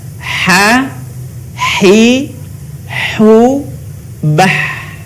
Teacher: Huruf ini dikeluarkan dari tengah tenggorokan kita. Ketika dilafalkan persis seperti kita melafalkan kata ayah, sah.